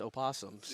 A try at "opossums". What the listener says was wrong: You don't pronounce the O. It's just possums.